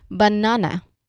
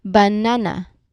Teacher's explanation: Yes, it is stressed on the second syllable. So we say it as banana.